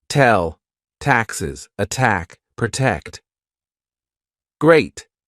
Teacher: tongue to the roof of your mouth touching the inside of your front teeth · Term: true T